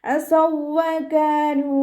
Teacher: കാഫിൻ്റെ കൂടെ അലിഫ് മദ് വന്നു. 2 കൗണ്ട് നീട്ടി കൊടുക്കുക.